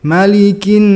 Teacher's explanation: jangan lupa untuk sedikit mendesis karena ini ujungnya Hames